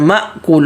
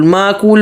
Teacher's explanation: حمزے کو جھٹکا دے کر پڑھنا ہے